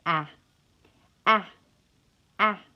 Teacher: Ah is referred to as ash, and it is the lowest of the 5 front vowels.